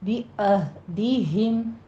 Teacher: والموفون بعہدہم، عین کو وسط حلق سے ادا کریں گے اور ہا کو عکس حلق سے سینے کی جانب سے نہیں کہنا، ہا میں حمس نہیں ہونی چاہیے، موٹی آواز سے پڑھیں گے۔ بعہدہم، ہم میں میم ساکن کا قاعدہ اظہار شفوی کریں گے۔